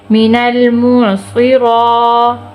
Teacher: میم زیر می، نون لام زبر نل، مینل، میم عین پیش موع، صاد زیر سی، مینل موع سی، را کھڑی زبر را، را کھینچ کے پڑھیں گے